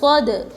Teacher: دال حروف قلقلہ میں سے ہے، ان کو پڑھتے وقت ان کے مخرج ٹکر کھا کر الگ ہوتے ہیں